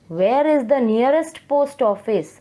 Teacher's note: So your tone has been fallen down. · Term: falling tone